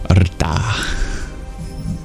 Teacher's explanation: It's more of a rolling R directly into the T.